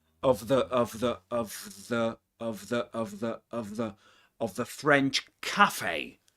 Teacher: this is the weak form of the word of, but this is of with a schwa, okay? Of the French cafe.